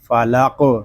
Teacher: قاف ساکن ہے، اس میں قلقلہ خوب ظاہر کریں گے۔ قاف حروف مستعلیہ میں سے بھی ہے، اس کو پر بھی پڑھیں گے، اس کو فالق اس طرح پڑھیں گے، اس کو فالق اس طرح نہیں پڑھیں گے، اس کو پڑھیں گے فالق۔